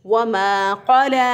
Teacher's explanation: ज़ुबान की जड़ जो है उसको उठाकर ऊपर के तालु से लगाएं, जो कि कव्वे के पास है, यानी हमारे गले के अंदर एक गोश्त का लोथड़ा सा लटक रहा हुआ है होता है, तो उसके पास से ज़ुबान को उठाकर ऊपर के तालु से लगाएं तो क़ाफ अदा होगा।